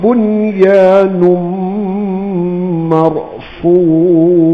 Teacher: nun mati bertemu ya, jangan dibaca dengan idgham ma'al gunnah. Dia kena izhar mutlak, jelaskan bunyi nun sejelas-jelasnya.